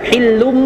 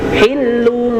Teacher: Diberi jarak direnggangkan jadi tidak rapat. Jadi bunyinya tidak hillum tapi hillung dia tidak rapat.